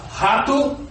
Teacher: O R, quando começa uma palavra em português, rato, o som dele é sempre gutural.